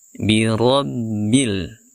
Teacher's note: huruf ro yang dibaca tebal karena dia berharakat fathah